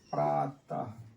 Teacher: विसर्ग, उच्चारण करते समय हा आता है।